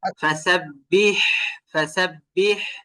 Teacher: হা উচ্চারণ করার ক্ষেত্রে চাপ দেওয়া লাগবে, আর এটাকে বাতাস, ভরপুর বাতাস বের করতে হবে। যেমন ফাসাব্বিহ, ফাসাব্বিহ, এইভাবে চাপ দেওয়া লাগবে।